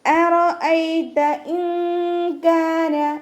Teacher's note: നൂൻ സാക്കിനയ്ക്ക് ശേഷം ഇഖ്ഫാൻ്റെ അക്ഷരമായിട്ടുള്ള കാഫ് വന്നു. അപ്പോൾ നമ്മൾ നൂൻ സാക്കിനയെ മറച്ചു വെച്ചിട്ട് മണിച്ചോതി കൊടുക്കുക.